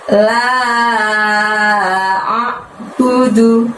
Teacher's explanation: Karena setelah la di situ ada lafaz a'budu. Jadi la-nya panjangnya 5 disusul dengan lafaz a'budu